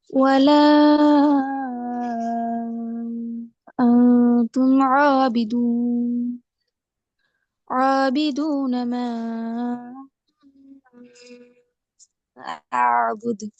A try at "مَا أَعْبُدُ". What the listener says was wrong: ஆபுத் பிழையாது. ஆபுத் தான் வருது. ஆபுத் அல்ல. அ ஆயின் ரெண்டும் வரணும். அபுது அபுது. என்று வந்துடக்கூடாது. வந்தால் ஐன் என்ன செய்யும், கலக்கிற மாதிரி வந்துடும். கலக்கல அடுத்துக்குள்ள போய்த்திடும். முக்கியமான அடுத்த விஷயம், ஐன் கலக்கி ஓதுற பகுதிக்குள்ள போய்த்திடக்கூடாது. ம போது தால் கலக்கணும். தால கலக்கிறது, அழுத்தம் கொடுக்கிறது தெளிவாக விளங்கணும்.